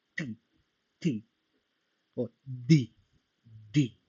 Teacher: En todos notamos que se toca el paladar, la parte superior